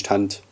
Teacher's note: Typisch ist das Fehlen der zweiten Lautverschiebung